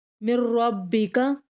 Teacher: میم کو نیکسٹ را کے ساتھ ملا کے پڑھیں گے، نون سائلنٹ ہو جائے گا درمیان سے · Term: ادغام